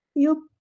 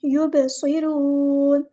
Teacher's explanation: با ساکن ہے تو کلکلا ہوگا، با کی آواز کو ہلائیں گے